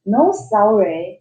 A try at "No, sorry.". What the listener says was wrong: "No, no, sorry. You gotta stop. It is a comma. You don't say no sorry. It's like you say there's no sorry for anything. no, sorry. No, sorry.